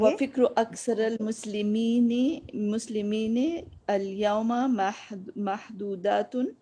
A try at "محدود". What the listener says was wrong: محدودتن تو نہیں ہے نا، تے تو نہیں ہے اس میں، دیکھیے ہے محدود میں تے ہے نہیں ہے نا.